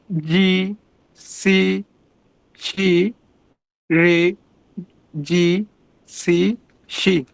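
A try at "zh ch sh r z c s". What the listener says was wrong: হ্যাঁ but এগুলো একটু ভারী আপনার জিহ্বার গোড়ার দিয়ে আসবে আর এবং জিহ্বা কার্ভ হবে। এই যে আমারটা একটু কেয়ারফুলি শুনি।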